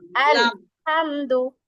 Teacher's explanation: আর আমাদের তো সামনে দুই দাঁতে মাঝখানে গোড়ার সঙ্গে লাগে লাম, মানে এক পাশের গোড়ার সঙ্গে লাগে না দাঁতের।